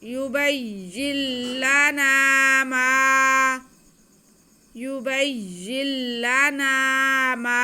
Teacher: मीम पे ज़बर और साथ में अलिफ, तो ये अलिफ मद्दा हो गया। माँ के आवाज़ को हम खींचेंगे।